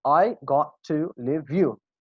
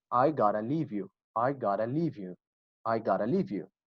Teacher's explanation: Got to will be reduced to gotta. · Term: reductions